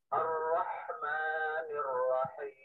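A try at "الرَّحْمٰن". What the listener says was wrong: Dan betul tipis. Ar-Rahman. Tinggal ma-nya dilatih juga. Ma-nya tipis. Ar-Rahman. Ar-Rahmani. Ar-Rahmani. Ar-Rahma. Bukan Ar-Rahma. Bukan mo, tapi ma. Bukan mo. Kayak suara sapi. Mo. Tapi ma. Nah, tipis ya. Tipis. Ma.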